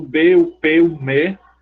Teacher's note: tem a bilabial bilabial os dois lados se encontram